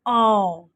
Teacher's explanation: ਇਸਦੀ ਸਾਊਂਡ ਔ ਜਦੋਂ ਅਸੀਂ ਇਸਦਾ ਉਚਾਰਨ ਕਰਾਂਗੇ ਤਾਂ ਸਾਡਾ ਮੂੰਹ ਜਿਹੜਾ ਓਪਨ ਹੋਏਗਾ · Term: ਕਨੌਲਾ